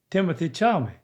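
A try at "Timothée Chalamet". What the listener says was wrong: Chalmy, he said. Chalmy. It's not cha, it's sha. Sha. Sh. Sha. But there's a L-A in the middle.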